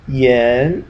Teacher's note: Remember to pronounce this kind of like an E-ish, not like an A, because remember this is the I-A-N ending.